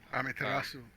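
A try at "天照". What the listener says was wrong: No, it's Amaterasu. There's you don't normally the U is like a weird half silent U, which happens a lot in Asian language.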